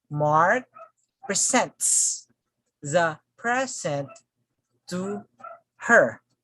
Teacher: as a noun this stress falls on the first syllable if it is a verb the stress falls on the second syllable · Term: functional shift